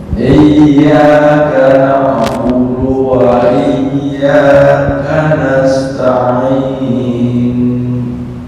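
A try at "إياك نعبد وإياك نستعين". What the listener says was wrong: Kayaknya suaranya masih ada nih. Hanya gerakan bibir, tapi nggak pengaruh ke suara. Suara nol. Ismam itu nggak keluar ke suara. Jangan iyyaka na'budu wa iyyaka nasta'in. Nah, itu keluar suara tuh.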